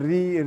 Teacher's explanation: ऋ बोलने में र आ रहा है इ आ रहा है र आ रहा है और इ आ रहा है इसका मतलब र के साथ-साथ